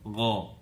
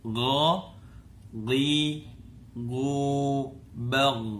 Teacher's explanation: Jadi kalau disebut ki, pangkal lidahnya terangkat ki ke atas sehingga bunyinya juga tebal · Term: isti'la